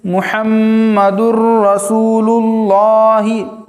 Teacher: تنوین کے بعد حروف یرملون میں سے را آیا ہے، را آنے کی وجہ سے غنہ کے بغیر پڑھیں گے